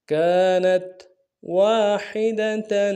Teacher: واو کے ساتھ الف مدہ ایک الف میں کھینچیں گے